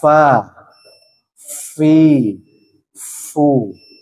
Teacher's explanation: yang pertama makhrajnya adalah untuk huruf FA Jadi huruf Fa Ini makhrojnya adalah bibir bawah bagian dalam nih ini ya bertemu dengan gigi seri atas